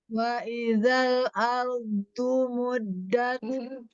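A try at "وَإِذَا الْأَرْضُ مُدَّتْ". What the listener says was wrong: Coba di tepi lidahnya, jangan di ujung.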